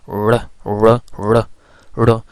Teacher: this R is pronounced as like trilled or rolled R, where when we pronounce this sound, so actually the tongue curls and touch at the alveolar ridge